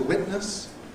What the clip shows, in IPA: ˈwɪʔnəs